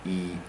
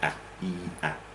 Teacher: E, you can hear it, can't you? That's quite a long vowel, and A, that's quite a short one.